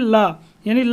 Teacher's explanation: ला का उच्चारण स्थान भी दंत होता है